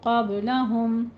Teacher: قبلہم میں قاف کو پر با کے اوپر قلقلہ کریں گے۔